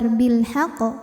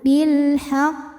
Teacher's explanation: Untuk membedakan dengan qalqalah yang tidak ada tasydid, maka dibacanya agak berbeda karena pantulannya dikeluarkan ada telatnya ya, telat dulu karena menyempurnakan tasdidnya. Jadi tidak langsung keluar bilhaq, tidak, tapi melainkan kita tahan dulu bilhaq. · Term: qalqalah akbar